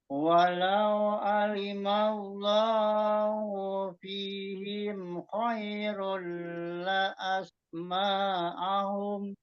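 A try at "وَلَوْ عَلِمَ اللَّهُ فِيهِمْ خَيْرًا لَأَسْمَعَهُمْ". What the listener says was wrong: Maknya jangan dipanjangin. Asma'ahum. Langsung. Jangan ma'ahum. Itu ada nambah panjang.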